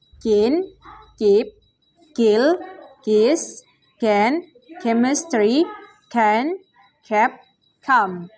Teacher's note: voiceless velar stop sound ka